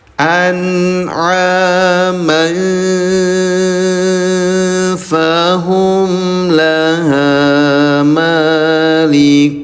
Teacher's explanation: Kalau masih kuat nafasnya berarti bertemu dengan huruf fa. Maka bunyi tanwinnya disamarkan selama 2 harokat, namanya ikhfa.